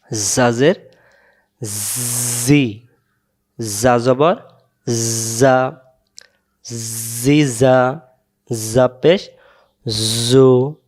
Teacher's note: যা অক্ষর সামনের নিচের দাঁতের আগা থেকে শীষ দিয়ে পড়তে হয়